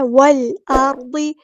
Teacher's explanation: والارض، واؤ کو ہم نے لام کے ساتھ ملا دینا ہے، حمزۃ الوصل ہمارا ڈراپ ہو جائے گا. لام جو ہے یہاں پہ لام قمریہ ہے، ظاہر کریں گے. حمزہ کی آواز کو واضح ادا کرنا ہے، را پورا ہو گیا، ہیوی لیٹر ہے، ضاد بھی ہیوی لیٹر ہے، پورا ادا کریں گے.